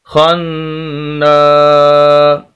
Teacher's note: واصل، خا زبر نون خان، خا کو نون کے ساتھ، نون مشدد شد والا، آگے الف بھی ہے اور لمبا بھی کرنا ہے نون کو اور غنہ بھی کرنا ہے